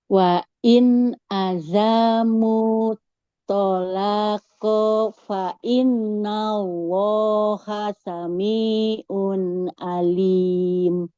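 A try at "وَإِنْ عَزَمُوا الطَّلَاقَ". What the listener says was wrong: Oke, wa in azamu zainya nggak boleh panjang. Wa in azamut langsung masuk ke to-nya.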